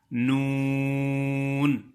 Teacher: نون نون، یعنی زبان کا وہ کنارہ جس کو طرف لسان کہا گیا ہے، یعنی جو دانتوں سے لگتی ہے کنارہ، داڑوں سے نہیں۔ زبان کا کنارہ یعنی طرف لسان، اوپر والے 3 دانتوں کے مسوڑے